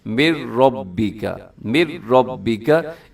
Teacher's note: इसको इदगाम ताम भी कहते हैं। इसमें क्या होता है कि नून बिल्कुल खत्म हो जाता है, मीम को डायरेक्ट अपने रा के साथ मिलाना है।